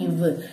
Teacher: கீழ் இதழும் மேல்வாய் பல்லும். கீழ் இதழும் பல்லும் மோதுச்சு அப்படின்னம்னா இவ்வு.